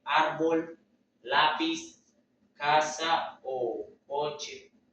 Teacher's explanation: La sílaba tónica está en la penúltima sílaba. Llevan tilde si no terminan en N, S o vocal. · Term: Graves o llanas